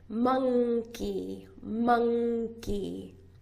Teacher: So do you see in the word monkey, we don't put the we don't say the N the way that you normally say an N. With the tip of your tongue. We usually use the back of the tongue. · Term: ng sound